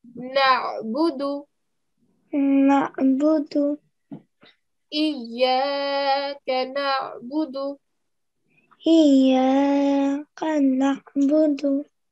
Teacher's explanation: Ayn, the sound comes from the middle of your throat, okay? So when you're saying the sound, try to give a bit of a jerking sound.